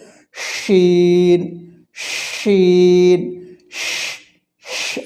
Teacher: উচ্চারিত হয় জিহ্বার মধ্যখান তার বরাবর উপরে তালুর সঙ্গে লাগিয়ে শিন মোটা করে শীষ বের হবে বাতাস বের হবে · শিন জিহব্বার মধ্যখান থেকে তার বরাবর উপরে তালুর সঙ্গে লাগিয়ে এটি উচ্চারণ হবে শক্ত করে